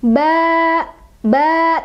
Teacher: tanwinnya hilang diganti sama fathah saja dan menjadi panjang dua ketukan. Ba, ba, tadinya ban jadi ba gitu. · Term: mad'iwad